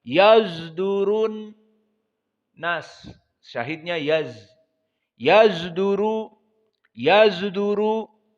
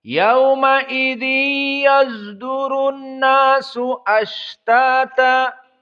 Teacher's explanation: ismam shad ila zai, antara shad dengan zai.